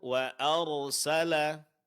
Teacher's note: Huruf ra-nya lebih ditebalkan, Bu.